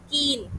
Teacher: जैसे कि the lips are spread as in the vowel sound कीन। कीन जब मैंने बोला तो मेरे होठ जो है वो पीछे की तरफ स्प्रेड हो गए